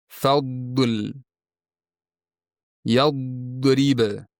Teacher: Agar siz dod harfini sukun bilan toʻg'ri aytayotgan bo'lsangiz, keyingi harfga oʻayotganda tilning yon chekkalaridan havo yanoqlarga yaʼni yuzni ichki tarafiga urilib chiqayotganini his qilasiz